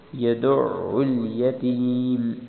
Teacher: فذلک الذی یدع الیتیم، یدع میں یدع نہیں پڑھنا، بعض اوقات انسان لپروی میں پڑھتا ہے تو یدع الیتیم پڑھتا ہے، بلکہ دال کو عین سے ملانا ہے، عین پر شد ہے، دال عین پیش دع، یدع الیتیم۔